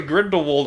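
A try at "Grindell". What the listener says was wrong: It's Grindal. Grindel. no wall. Grindel Matthews.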